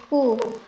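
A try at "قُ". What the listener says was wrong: Nah, itu tadi soalnya terdengar masih ada udara yang terlepas agak banyak. Jadi ya kayak kakiku, itu yang kurang tepat. Jadi yang lebih tepat ya seperti mirip huruf K dalam bahasa Indonesia, cuman yang berbedanya ketika disukunkan aja. Ya, kalau mengucapkan berharokat biasa kakiku, tadi tidak sampai kakiku, jadi biasa kulan, kulin, kulun.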